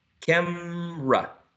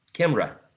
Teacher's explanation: can be pronounced using two syllables or three